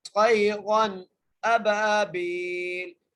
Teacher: را پر ہم غنہ نہیں کریں گے، بغیر غنہ کیے پڑھیں گے